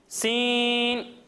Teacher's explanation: जब हम सीन की अदायगी करेंगे तो इसमें सीटी की आवाज़ आएगी, यानी सीन। और जब हम स्वाद की अदायगी करेंगे तो इसे हम मोटा कर कर पढ़ेंगे, यानी स्वाद।